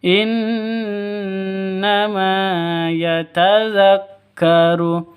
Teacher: Ma panjang dua ketukan karena ada Alif diawali dengan fathah mad asli · Nun tasydidnya berdiri sendiri artinya gunah gunah asli atau gunah musyaddadah e panjangnya atau dengung dua ketukan ya